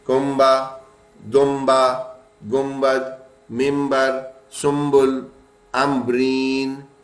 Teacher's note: سب میں نون کی جگہ میم کی آواز نکلتی ہے